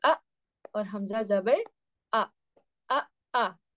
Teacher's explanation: حمزہ کہاں سے ادا ہوتا ہے؟ حلق کے بالکل آخری حصے سے ادا ہو رہا ہے